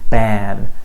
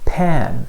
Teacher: the B sound is voiced because of a vibration and the P sound is unvoiced because there's no vibration